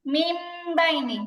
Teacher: নুনটাকে বাদ দিয়ে মিমটা ধরে গুণনা করে পড়বো। তখন বানানটা এরকম হবে, মিম মিম জের মিম বাইনি, মিম বাইনি, নুনের জায়গায় মিম হবে, মিম বাইনি। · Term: ইকলাব